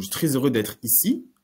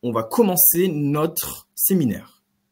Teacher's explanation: l'intonation montante au milieu d'une phrase et l'intonation descendante en fin de phrase pour mettre un point.